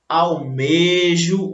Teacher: elas devem ser pronunciadas com o E fechado, tá? E não com o E aberto